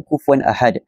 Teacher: Dalam kes ini bertemu dengan huruf hamzah, iaitu dibaca dengan tanwin tersebut dibaca dengan jelas tanpa dengung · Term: Izhar halki